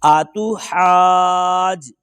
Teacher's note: حمزہ زبر آ تا پیش تو آتو حا الف جیم زبر حاج آتو حاج. جیم کے اوپر کلکلا بھی کریں گے